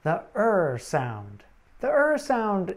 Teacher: it is like a mix of the a vowel sound sometimes called the schwa and the r sound it is a mid-central vowel like the uh vowel sound and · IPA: /ər/